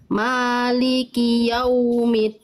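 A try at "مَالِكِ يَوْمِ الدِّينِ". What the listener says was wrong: Jangan din, jangan keluar nafas dalnya. Maliki yaumiddin. Jangan din. Nah, lagi Bunda, jangan keluar nafas dal nggak punya sifat hams.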